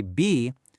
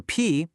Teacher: Seriously, go ahead and put your hand on your throat. When you say B, you should feel a little vibration, right? But for P, it's just a puff of air. No vibration.